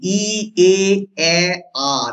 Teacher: সামনে যেগুলো আছে সেগুলো কিন্তু প্রসারিত স্বরধ্বনি ই এ আ দেখো পরপর যাচ্ছে মাঝখানে আছে বলে মধ্যস্বর ধ্বনি